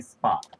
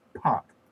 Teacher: If you say spot, you don't feel that puff, or you feel much less of one. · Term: puffless P